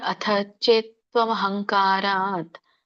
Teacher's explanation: ಅಥ ದೊಡ್ಡ ಥ ಇದೆ, ಮಹಾಪ್ರಾಣದೆ ಚೇತ್, ಚೇ ಎಳಿಬೇಕು, ತ ವ್ಯಂಜನ.